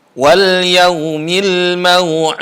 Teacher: Ada qalqalah juga di huruf terakhir yaitu huruf dal.